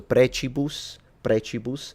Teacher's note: the pronunciation is clearly ecclesiastical because the C is pronounced as a ch